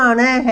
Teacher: इनका उच्चारण जो है वो नाक से होता है, जो हम बोलते हैं तो नाक से ध्वनि निकलती है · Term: नासिक के वर्ण